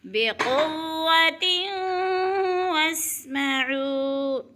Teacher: وہ ساکن سے پہلے عین کے اوپر پیش ہے تو وہ مدہ ایک الف کے برابر کھینچ کر پڑھنا ہے · آتیناکم بقوہ، بقوۃ واسمعوا، تیوں پہ 2 زیر تنوین کے بعد وہ مشدد آ گئی ہے تو ادھر ادغام ہو رہا ہے، یعنی سختی سے جمع کر پڑھنا ہے واو کو